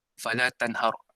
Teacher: Tanhar di sini adalah izhar halqi kerana apabila nun sukun bertemu dengan ha, iaitu ha itu adalah huruf izhar, dibaca secara jelas tanpa dengung